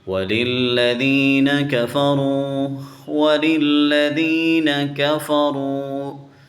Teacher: اس لام کو لام سے ملائیں گے، لام کے اوپر شد ہے تو اس کو سختی سے پڑھیں گے۔